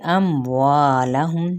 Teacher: مد اصلی بالالف، میم پہ اظہار شفوی